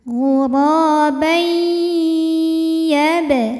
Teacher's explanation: tanwinnya dileburkan ke ya. Ghurabai disertai bunyi dengungan. Tahan sampai ada suara masuk hidung. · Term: idgham bi gunnah